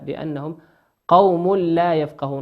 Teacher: بأنهم قوم ميم ساكنة في كلمة بأنهم، والقاف من حروف الإظهار